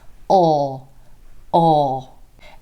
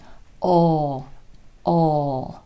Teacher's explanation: this lesson where we dive deep into practicing the dark L essentially this sound is made with the back of the tongue the back of the tongue comes down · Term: dark L sound